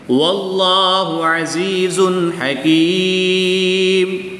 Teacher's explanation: یا ساکن سے پہلے زا کے نیچے زیر ہے تو یا مدہ ہوگا۔ ایک الف یعنی 2 حرکات کے برابر کھینچ کر پڑھیں گے۔ یا ساکن سے پہلے کاف کے نیچے زیر ہے تو یا مدہ، یا مدہ کے بعد وقف کی حالت میں میم کی 2 پیش کو ساکن کریں گے تو یہاں پر مد عارض ہوگی، 2 سے 3 الف تک کھینچ کر پڑھیں گے۔